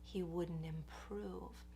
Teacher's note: The word wouldn't is happening really quickly and lightly.